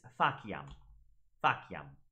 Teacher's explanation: The C always makes that K sound in classical Latin.